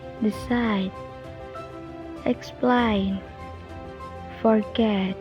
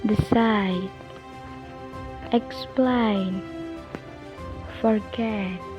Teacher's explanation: can you hear the stress the stress is on the second syllable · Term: second stress